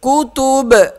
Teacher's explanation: جب وقف کریں گے تو با پہ قلقلہ کریں گے